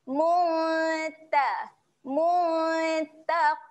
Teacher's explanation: nak sedia sebut huruf ta okey Jadi waktu kita dengung tu lidah kita dah get ready nak naik ataslah sebab makhraj huruf ta dekat atas kan belakang gigi atas